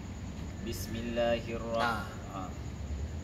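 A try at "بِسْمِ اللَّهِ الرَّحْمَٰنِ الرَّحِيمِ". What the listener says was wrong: Harusnya Bismillah. Panjang kan? Bismillahirrahmanirrahim tadi. Kenapa Bismillahnya pendek? Loh, tadi Bismillah. Harusnya kan Bismillahnya panjang. Huruf lamnya tanda baca panjang.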